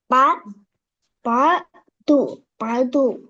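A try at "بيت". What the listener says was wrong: பே என்று தான் வருது. பே பே என்று ஐனுக்கு போகணுமே. பேது பேது பேது அது போல பே பே அதை மட்டும் சொல்லுங்களா? ம் பே சொல்லி பே சத்தம் சத்தம் சத்தம் சத்தம் சவுண்ட் சவுண்ட் சவுண்ட். ஆ து து தரிப்பா வரணுமா? பே து பே து.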